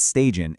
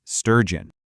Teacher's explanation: the two big things to nail here are that central vowel sound and then making sure you actually produce that powerful J sound that kicks off the second syllable